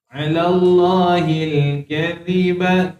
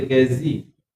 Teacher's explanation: Teman ni huruf zal. Maka teman jangan lupa keluar ujung lidah.